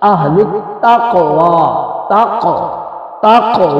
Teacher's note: قاف ساکن پر قلقلہ کرتے ہیں